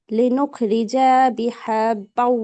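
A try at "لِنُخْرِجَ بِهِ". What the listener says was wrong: জিমে তো টান নাই, খেয়াল করুন, হরকত আছে, লিনুখরিজা বিহি।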